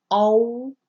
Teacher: all is rounded so we don't say ow okay more like all and there's like a a rounded closing of the lips and